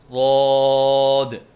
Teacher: بعض بچے ضاد کے الف کی ادائیگی کے وقت آواز میں لہراؤ سا پیدا کرتے ہیں، یہ غلط ہے، جیسے ضاد۔ بعض بچے ضاد کو پر کرتے وقت ہونٹوں کو گول کرتے ہیں، یہ غلط ہے، جیسے ضاد۔